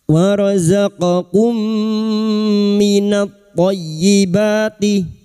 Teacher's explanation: Idgham mimi memasukkan atau mentasdidkan dua mim. Masuk pada huruf mim berikutnya disertai mendengung selama tiga harakat. · Wa razaqakum minat thayyibati. Minat tha, lam ta'rif yang bertemu tha, idgham syamsiyah masuk pada huruf to, minat thayyibati, dan berikutnya huruf to masuk pada huruf ya yang bertasdid hanya masuk tanpa mendengung.